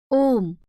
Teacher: प्लुत स्वर के उच्चारण में ह्रस्व स्वरों की अपेक्षा तिगुना समय लगता है।